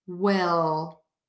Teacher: there but it's flat and high on my mouth and then I touch my teeth or the alveolar Ridge that spot where your teeth meet the skin for that l sound